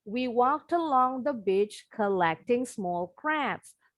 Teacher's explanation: Akhiran ED-nya bunyinya T. Bunyi huruf T-nya disambung ke A.